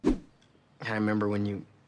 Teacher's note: as sometimes happens in fast native speech, dropped the first syllable of remember